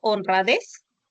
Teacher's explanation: en la palabra honradez, des va a ser tu sílaba tónica. Las otras dos sílabas se van a considerar como sílabas átonas.